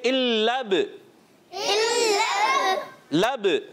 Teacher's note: बा में कलकला करेंगे, आवाज़ लौट कर आए, दीवार जैसे गेंद पर लगकर चिपकती नहीं है, वापस आ जाती है।